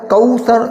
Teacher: کوثر وہاں پر ہونٹ گول ہوں گے وہ کیونکہ واو ہے